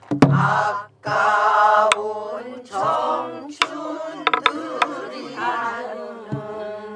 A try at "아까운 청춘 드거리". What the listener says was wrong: 거기가 안 되네. 청춘들이 그러니까는. 저기 뭐야 네 다섯 여섯 번째 그 네 번째 다섯 번째 여섯 번째 박자가 안 돼. 아까운 청춘 드거리. 청춘 드거리.